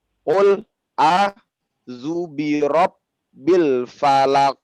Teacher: Qul a'u itu 2 harokat.